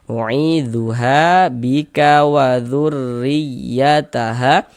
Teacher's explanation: maka huruf ro dibaca tipis, dibaca tarkik, ya, tipis kan huruf ro-nya.